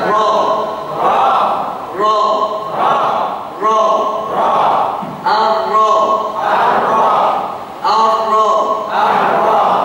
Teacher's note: ujung lidahnya bergetar yang bertemu dengan langit-langit saja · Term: huruf ro